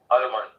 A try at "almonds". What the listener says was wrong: So you don't call them almond, you call them almonds. L is silent. Almonds. Almonds. Of course, a lot of people do, they do call it almond, but then the correct one is almonds.